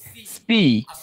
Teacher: সিনটা পাতলা মানে চ্যাপটা হবে